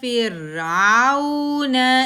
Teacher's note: 1 count, آئین کے اوپر زبر، آگے واؤ ساکن آ رہا ہے، واؤ ساکن سے پہلے زبر واؤ لین سافٹلی ادا ہوگا